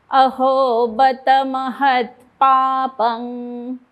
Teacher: मी प म्हणजे अनुस्वाराच्या इथे ओठ बंद नाही करत आहे. जिभेचा मधला भाग वरती त्या वाटी सारखा जो भाग आहे त्याला लावते.